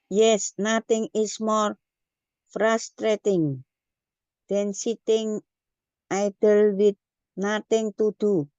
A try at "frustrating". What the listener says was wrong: Okay, so when you pronounce the T, you don't have to be like a hard T like that, okay? Jadi saat pelafalan yang ini frustrating, okay? Nah, T-nya itu jadi kita kalau saat mengucapkan itu T-nya itu kita ganti pakai D gitu.